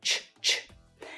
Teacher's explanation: this sound is controlled by my tongue in a similar way to the t sound, the tip of my tongue. But also my tongue is tense all the way along the sides here.